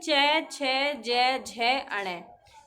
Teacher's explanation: तालव्य तालु से बोले जाने वाले होते हैं